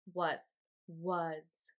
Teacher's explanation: the a makes the uh sound and the s makes the z sound just like in the word is it sounds like there's a